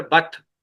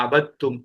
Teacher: دال لکھا ہوا ہے پڑھا نہیں جائے گا